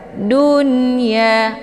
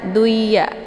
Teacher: berhubung nunnya dengan ya masih satu dalam satu suku kata maka nunnya dibacakan secara jelas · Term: izhar mamnuk